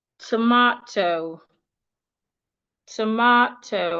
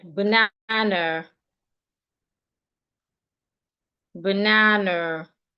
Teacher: So for these type of words, we are stressing their second syllable. But even though we are stressing their second syllable the parts that we are not stressing some of some of these parts the vowels there are reduced into a sure.